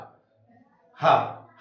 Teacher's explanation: ह में हल्की गर्म वायु बाहर आती है तो इसलिए उष्म वर्ण कहे जाते हैं इसके बाद में इसमें